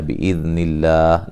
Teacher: لفظ اللہ کو باریک پڑھیں گے، اس سے پہلے حرف پر زیر ہے